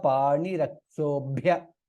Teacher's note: half Bha is Mahaprana